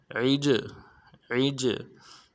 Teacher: جیم کے اوپر جب ساکن ہو تو قلقلہ کریں گے